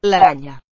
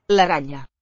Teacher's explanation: Probably a palatalized N.